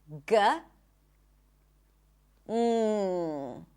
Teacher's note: G where you block the air in the back and release the sound with a puff